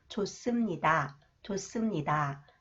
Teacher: When the final consonants 히읗 is followed by 시옷, 시옷 is pronounced 쌍시옷, s sound.